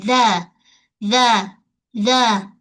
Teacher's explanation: ujung lidah mesti keluar sedikit daripada sempadan gigi · Mesti disebut dengan keadaan lembut, jangan berdesir. Kalau berdesir nanti jadi zai. Yang zal mesti lembut. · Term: huruf Zal